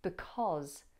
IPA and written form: bɪˊkɒz (بسبب)